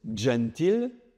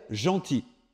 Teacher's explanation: on est passé à gentil avec une consonne palatale simple